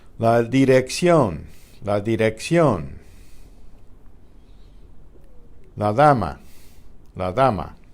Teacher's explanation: you can guess that one okay the D after a vowel the articulation is relaxed to let air escape through the mouth while the D is being pronounced the result is similar to the th of the English father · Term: intervocalic